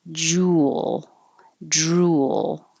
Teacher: Or you do have to actually move your lips from being more rounded for the U to being less rounded for the L. So a tiny W does happen, but I don't want you to exaggerate it and say jewel, drool, because that's kind of weird.